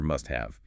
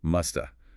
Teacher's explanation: consider must have in fast speech. This often reduces to must or even sounds like musta. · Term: dropping sounds